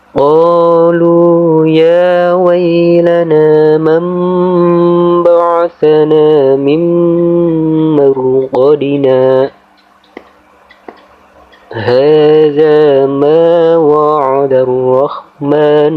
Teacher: Cara membaca waqaf saktah di sini pada lafaz mim marqadina, kita harus berhenti sejenak tanpa bernafas selama 1 alif atau 2 harokat atau 2 ketukan